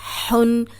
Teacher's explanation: اب ہا ہے، حروف حلقی ہے، حلق سے نکالیں